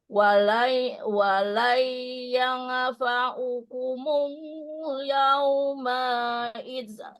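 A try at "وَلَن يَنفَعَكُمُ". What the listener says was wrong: Awas, bukan yang fa'u. Walai yanfa'akumul yawma idzalamtum annakum. Masa nun dibaca kol aja. yang fa'a.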